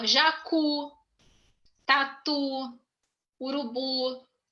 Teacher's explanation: Você percebe que é uma palavra tônica na última sílaba, mas ela não é acentuada, tá?